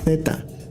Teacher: for those people in Spain that do the variation they do the Theta like a th sound